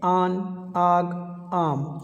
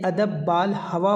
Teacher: ایک کی آواز جو ہے وہ کھینچ کر کے پڑھی جا رہی ہے اور دوسری وہ جلدی میں پڑھی جا رہی ہے جس میں اس کی آواز نہیں کھینچی جا رہی ہے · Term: الف ممدودہ